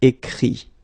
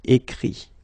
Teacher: Remember that phonetically this final T doesn't exist. Okay? So the sound will be only this I.